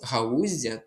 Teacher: А ось галузя тут буде м'який звук з. Ось такий. Він буде м'який і буде подовжений.